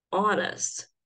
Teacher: quando eu falo, ela começa com um som de vogal, né? Um som de O, honest. Por causa disso, eu coloco N na frente dela.